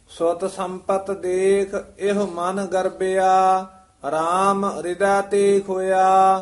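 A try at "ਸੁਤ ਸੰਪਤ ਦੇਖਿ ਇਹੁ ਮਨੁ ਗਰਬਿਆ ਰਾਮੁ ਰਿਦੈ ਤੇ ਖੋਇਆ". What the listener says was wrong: सुत संपत देख एह मन गर्बिया, इथे बब्बे नाल ही गर्बिया उच्चारण करना, इथे विश्राम है। राम हृदय नहीं कह देना, राम हृदय ते खोया।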